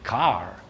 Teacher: Americans tend to have a slightly more rolling R sound